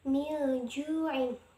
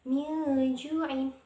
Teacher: Nah, di situ kan ada nun sukun bertemu dengan salah satu huruf ikhfa yaitu huruf jim. Milju'in, maka bacanya tuh samar, menyamarkan bacaannya